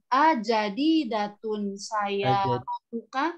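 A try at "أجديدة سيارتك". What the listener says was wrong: Ajadidatun ya. Jadi A-nya itu sebenarnya jangan kepanjangan tapi ajadidatun. Ajadidatun. Kalau tadi agak tertarik ya.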